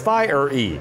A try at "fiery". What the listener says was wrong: You're just saying fi. That's F-I. You're missing the whole R-E part. But then the first syllable is just fi, which is not fire.